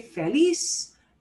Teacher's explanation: n that is not s we punch the end of syllable we do punch the end syllable